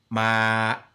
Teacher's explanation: And then I've got stiff voice, ma. My voice cuts it.